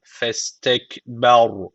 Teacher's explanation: Öncesek harf üstten bağlandığı için buradaki cezimli ra kalın okunacak